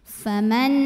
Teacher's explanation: Lam pada lafaz Allah dibunyikan secara tafkhim karena huruf sebelumnya fathah, maka bacanya tebal